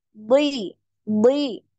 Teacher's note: huruf d ini ketika kasrah pun dia tebal